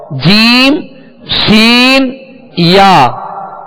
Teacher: یہ درمیان زبان یعنی بیچ زبان اور بیچ تالو، اوپر کا بیچ تالو، اس سے ادا ہوتے ہیں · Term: حروف شجریہ